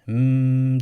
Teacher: ne diyoruz yani gunne derken ne demiş oluyoruz genizden sesi çıkarmak zaten Mim harfinin sesi genizden çıktığı için Çünkü Mim M dediğimiz zaman dudaklarımızı kapatırız